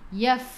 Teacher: untuk huruf fa sifat hurufnya pun hamas, kena ada angin